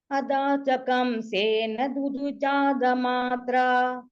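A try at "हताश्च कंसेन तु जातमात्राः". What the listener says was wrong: அங்க இருக்க விசர்க்கம். சௌரி சுதத்வமாப்தா, ஹதாश्च கம்சேன து ஜாதமாத்ராः, துதுவ ஹதாश्च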